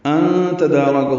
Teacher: ان تدارکہ میں نون ساکن کے بعد تا آنے کی وجہ سے اخفا ہے